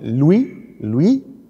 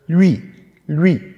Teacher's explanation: Also L, Halbvokal ist U und dann I. Und das zweite Wort für Deutsche ist oft sehr schwer zu artikulieren. Das ist der Halbvokal Ü.